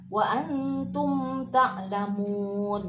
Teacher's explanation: Wa antum ta'lamun, mim mati ketemu tak, dibaca ijhar.